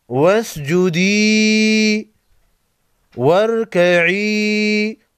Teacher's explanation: دونوں کو ایک الف کے مقدار کھینچ کر پڑھیں گے، اس کو مد اصلی بھی کہتے ہیں